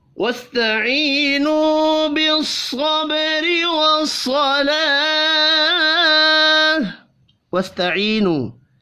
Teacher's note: یا مدہ اور واو مدہ دونوں ایک ایک الف کے برابر کھینچ کر پڑھے جائیں گے